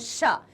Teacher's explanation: शा का जो उच्चारण है वो तालु से किया जाता है, क्योंकि जीभ ठीक है, जब हम श बोलते हैं श, तो जीभ जो कहां हमारी टच हो जाती है?